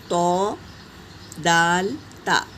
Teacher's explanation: زبان کی نوک اوپر سامنے والے دو دانتوں کی جڑ سے ادا ہوتے ہیں